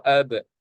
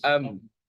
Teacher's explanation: ab kan hujung bibir, am hujung bibir